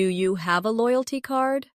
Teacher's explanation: In casual speech, do you becomes dia.